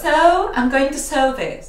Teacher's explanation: Es el sonido schwa, como os digo siempre, y con diptongo de oh.